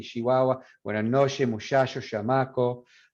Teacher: So it comes out, it's spelled that this phoneme right here, this phoneme, ch, but it comes out sh